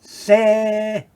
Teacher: Then we have a zere, and it's often translated an AY sound, but it's actually an E sound, but a longer sound, se. And then we have short A sound, pa, tuck, pa, tuck.